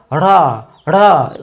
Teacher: এরপরে ঢয়বিন্দু র এর সঙ্গে একটি অধ্বনি যুক্ত হচ্ছে, র উচ্চারিত হচ্ছে, এই ঢয়বিন্দু র এর উচ্চারণও হবে মূর্ধাকে স্পর্শ করে, অর্থাৎ রা রা।